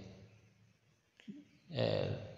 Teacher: لام پہ غنہ نہیں کرنا چاہیے، لام کو باریک بھی پڑھنا چاہیے، دال ساکن میں قلقلہ کرنا ہے۔